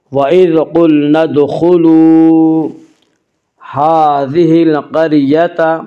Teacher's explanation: ہا کے پر کھڑا زبر ہے، کھڑا زبر کو ایک الف کے برابر کھینچ کر پڑھیں گے